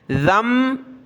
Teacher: ذال کو میم کے ساتھ ملایا، ناک میں آواز پیدا کرتے ہوئے